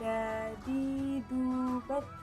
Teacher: dikeluarkan dengan cara menempelkan atau menyentuhkan ujung lidah dengan gusi bagian atas